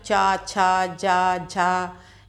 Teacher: जैसे आप जब चा, छा, जा, झा या ये उच्चारण करते हैं तो आप देखते हैं आपकी जीभ जिस हिस्से को टच करती है वो तालु कहलाता है।